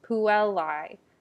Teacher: you're going to see emphasis usually before a double consonant like in puellae the l is longer